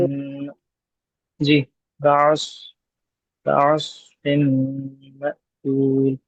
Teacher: سواد میں ہمس بھی ہے، سواد میں رخوت بھی ہے